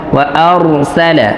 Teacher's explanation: যেহেতু এখানে র সাকিনের পূর্বে জবর আসছে, তো আমাদের এখানে রকে পর করে মোটা করে পড়তে হবে